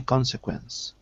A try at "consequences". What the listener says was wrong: Consequences. Don't forget the second syllable. Consequences.